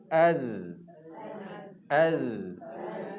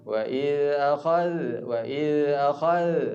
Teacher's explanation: Az yang Z tu adalah suara nafas tertahan Ya tapi kalau kita buat lembih tu habis dengan nafas kita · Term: huruf Zal